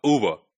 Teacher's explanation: We are starting with O, and then we are finishing with schwa. So this is again one centering vowel.